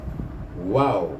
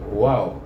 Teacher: Huruf waw ini juga keluar antara dua bibir. Dia adalah makhraj yang keluar daripada bibir, iaitu antara dua bibir, tetapi dalam keadaan bibir kita terbuka, iaitu dia membulat sedikit, wow gitu jadi terbuka, mulut kita terbuka, wow.